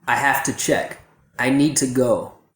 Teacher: we should use the schwa as much as possible. So instead of thuh, it should be tuh. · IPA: / tə /